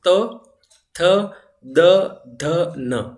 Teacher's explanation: त बोलते समय आपकी जो जीभ है वो दांत से टकरा रही है।